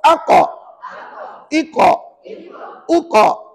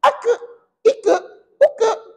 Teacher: huruf qaf ni sifatnya tebal. Betul? Bila tebal tak boleh bunyi aka. Kalau aka nipis.